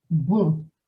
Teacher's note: my mouth is looking like I'm blowing a kiss or drinking out of a very small straw. And that's the lip movement you want to get the most accurate sound for You can practice with the word bon, which means good.